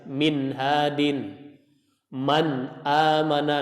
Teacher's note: huruf nun yang dibaca itu kadar gunanya tidak setebal ketika huruf nun bertasydid atau pada posisi dia idgham bi gunnah. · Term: naqis